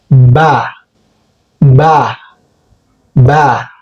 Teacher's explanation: It is made when your upper lip meets your lower lip. Ba. Press them together gently and then release.